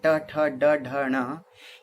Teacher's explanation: तो ट में भीतर जाना पड़ रहा है। टवर्ग की ध्वनियां ट, ठ, ड, ढ, ण, ये भीतरी कोमल तालु से उच्चारित होती हैं, इसलिए इन्हें मूर्धन्य ध्वनि कहते हैं